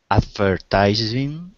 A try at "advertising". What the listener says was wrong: Yeah, it wasn't actually the Z in this one. It was to emphasize the first syllable, advertising. Advertising. That's the case in a lot of long words like this where the first syllable is emphasized.